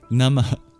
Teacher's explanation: At the end of Namah, there is a little exhale known as a visarga, symbolized by an H with a dot under it.